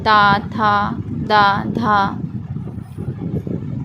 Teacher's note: जब हम ता वर्ग का उच्चारण करते हैं तो जीभ हमारी दांतों को छूती है